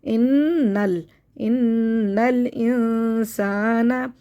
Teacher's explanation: इन्नल दो दफ़ा पढ़ेंगे तशदीद को